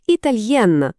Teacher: Носовий звук зник, лишився чистий дзвінкий Н.